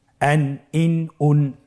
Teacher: প্রত্যেকটি উচ্চারণের শেষে দন্ত ন উচ্চারিত হচ্ছে